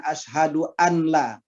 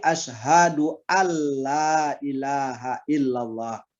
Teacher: Bila ada nun sukun atau tanwin ketemu dengan ro atau lam, maka bacaan nun sukun atau tanwinnya kita masukkan ke dalam ro atau lam yang sesudahnya